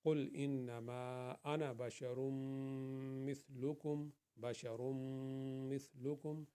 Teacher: تنوین کے بعد میم آ گئی ہے تو ہم نے اس لیے یہاں پہ غنہ کی ہے